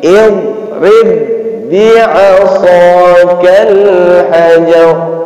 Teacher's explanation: Jadi ba yang pertama itu seakan-akan tidak ada. Langsung kita masukkan ke ba yang kedua. Maka di Al-Quran itu diberi tanda tasydid. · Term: idgham mutamathilain